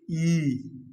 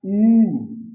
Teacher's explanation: जब हम संवृत्त स्वरों का उच्चारण करते हैं तो हमारा मुंह थोड़ा सा भिंचता है, थोड़ा सा खिंचाव इसमें आता है। जैसे हम बोलेंगे ई, थोड़ा सा देखिए ई, बड़ी के ई, तो हमारा मुंह थोड़ा सा खींच रहा है।